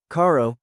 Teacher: Try Rio, river, caro, car, point two. The soft R when R sits between vowels. Think of the quick tap in the American English butter.